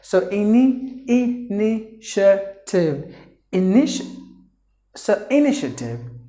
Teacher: The TA should be pronounced like a sh.